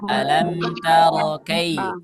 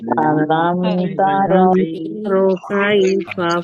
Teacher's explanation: Ketika mengucapkan kaifa itu jangan sampai menjadi imalah. Jangan dibaca alam taro kai.